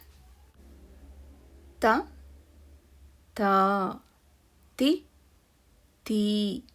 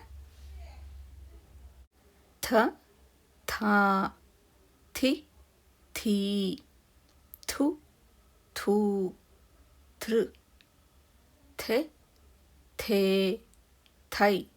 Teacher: ಇವಾಗ ಥ ಗುಣಿತಾಕ್ಷರ ಹೇಳುವಾಗ ಗಾಳಿಯನ್ನು ಹೆಚ್ಚು ಹೊರಗೆ ಹಾಕಬೇಕು ಅನ್ನೋದು ನೆನಪಿರಲಿ. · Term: ಮಹಾಪ್ರಾಣಾಕ್ಷರ ಥ